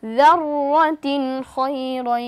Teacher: তানবিনের বামে খ এসেছে অর্থাৎ ইজহারের হরফ আমরা স্পষ্ট করে তাড়াতাড়ি পড়ব।